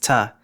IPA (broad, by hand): tsɨ